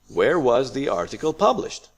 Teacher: this is a wh question so we start Rising then we go falling